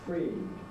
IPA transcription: friːd